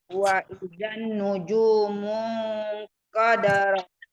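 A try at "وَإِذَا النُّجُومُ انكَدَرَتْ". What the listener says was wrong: Wa izan kurang dengung.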